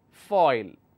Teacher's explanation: the third one is called a diphthong and it's foil which means it's a combination of a long vowel sound and short vowel sound